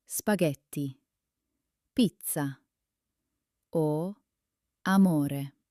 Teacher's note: The stress falls on the penultimate syllable. That's the second to last one.